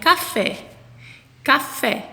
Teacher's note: fé é a sílaba mais forte. Então, ela é a última sílaba da palavra. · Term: sílaba tônica